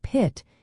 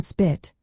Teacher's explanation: For instance, in English, the P sound at the start of a word like pit is pronounced with a puff of air called aspiration. But in spit, the P is unaspirated because of the rule that says P after S is not aspirated